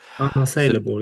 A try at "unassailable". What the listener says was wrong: I think you pretty much had it, but you kind of gave up halfway through the word.